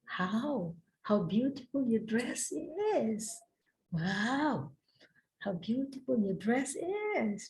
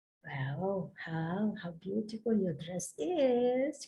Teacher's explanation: Naik sedikit ya. Kalau menggunakan kalau mocking, intonasinya tinggal kita turunin.